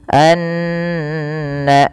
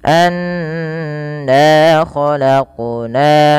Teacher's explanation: bunyi suara nunnya ditahan, tidak hanya sekedar anna tapi ditahan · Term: gunnah